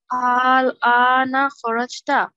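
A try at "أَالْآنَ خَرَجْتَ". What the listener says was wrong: লম্বা করে বলতে হবে আল আনা খরাজিতা। বলো।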